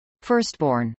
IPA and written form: fˈɝstbˈɔːrn (firstborn)